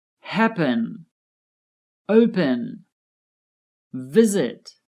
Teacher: The first syllable of these verbs are stressed.